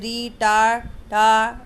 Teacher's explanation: इनका मूर्धा से होता है उच्चारण स्थान, तो वर्ग का नाम मूर्धन्य हुआ